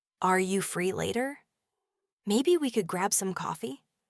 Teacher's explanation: could grab some coffee is delivered with a gentle, inviting, often slightly rising tone. It transforms a simple question into a soft suggestion, not a demanding imperative.